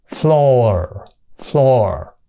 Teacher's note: Đọc là floor. Rồi số nhiều của nó là thêm chữ s vô và phát âm là chữ z, floors. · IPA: /flɔ:rz/, /flɔ:r/